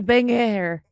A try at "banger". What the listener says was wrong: So you're French and you still got the hard G in there?